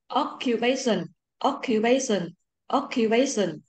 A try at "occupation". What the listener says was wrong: Lại occupation sao dài ha. Không phải bay, đọc lại pay, chúng là bay bay ha, occupation.